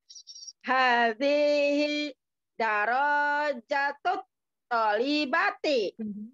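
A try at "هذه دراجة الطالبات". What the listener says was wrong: Iya. Roknya pakai tasdid. Roknya tasdid.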